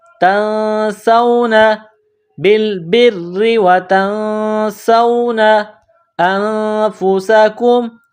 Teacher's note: نون ساکن کے بعد سین ہے، حروف اخفا ہیں تو آواز ناک میں چھپائیں گے۔ اس ناک میں آواز چھپانے کو اخفا کہتے ہیں۔